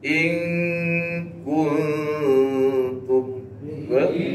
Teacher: apa Mad Jaiz ya kita baca empat lima lima harakat dan sebelah tu jumpa nun mati dengan Kaf sebelah lagi tu jumpa nun mati dengan ta dua-dua Tu sifat istifal jadi merendah bunyi dia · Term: ikhfa Hakiki